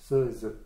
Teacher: Et elles se prononcent au centre de la bouche. Se, ze. Derrière les dents, donc. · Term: sifflantes